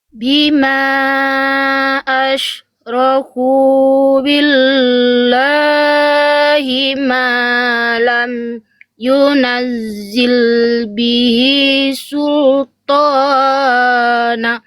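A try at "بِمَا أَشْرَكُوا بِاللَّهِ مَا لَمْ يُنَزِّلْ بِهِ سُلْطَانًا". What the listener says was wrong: Ya, tonya jangan kepanjangan. Tonya 2 harokat. Sultan. Nah, nanya nggak boleh 1 harokat. Tonya 2 harokat. Nanya di sini betul nggak dibaca nan, tapi naknya vokal a-nya jadi 2 harokat harusnya. Namanya mad iwad. Jadi bukan sultana. Enggak, tapi kita baca sultana. Ini 2 harokat. Ini juga 2 harokat. Nah, sultana.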